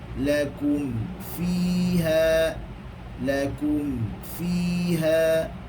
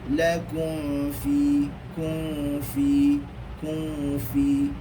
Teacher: Kerana mim ini sifatnya dengan ba, yakni sifatnya adalah bibir. Maka kena betul-betulkan katupkan mim itu. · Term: izhar syafawi